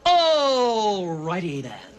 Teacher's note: American English has a really weird R sound this ER thing that you do when you Bunch up your tongue